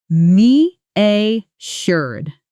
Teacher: stress on the first syllable and that middle sound is like jur similar to composure.